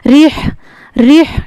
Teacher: یہاں پہ را کو باریک پڑھیں گے اور ہا کا مخرج جو ہے اس کا خیال رکھیں گے